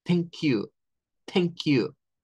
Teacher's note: ahí hacemos el sonido sin vibración para la TH